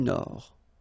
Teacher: Final D not pronounced.